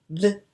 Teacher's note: Por ejemplo, B, si te das cuenta, es una consonante bilabial